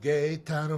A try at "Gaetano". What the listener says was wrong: It's Gaetano. Gaetano. It's not gay.